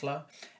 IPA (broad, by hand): ɬ